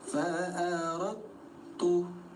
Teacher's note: Ada huruf dal sukun bertemu huruf ta disebutnya idgham mutajanisain dibaca lebur nol harakat. Jadi bunyi dal yang pertama dianggap enggak ada langsung tempelkan ke huruf ta yang bertasydid